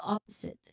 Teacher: So the pronunciation it begins with the stress of the first syllable of that's the first the syllable stress is on the first syllable